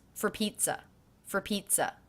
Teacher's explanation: I definitely hear the first syllable of pizza as being stressed